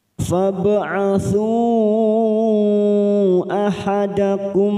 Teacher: ada Mad bertemu dengan Hamzah di lain kalimat namanya bacaan Mad Jaiz munfasil empat harakat kita panjangkan